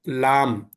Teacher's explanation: నాలుక తిప్పేసి పైన తగిలించి తీసుకున్నాం